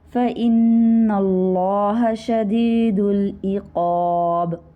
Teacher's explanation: عین آپ کا حلق سے ادا ہوگا، قاف پر ہے حروف مستعلیہ میں سے